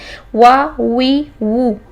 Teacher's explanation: وا، وی، وو، اس میں وا، وی، وو نہیں آنا چاہیے، ٹھیک ہے. ہونٹوں کے ساتھ دانتوں کا بالکل یوز نہیں کرنا ہے، جسٹ ہونٹوں کو گول کریں. وا، وی، وو.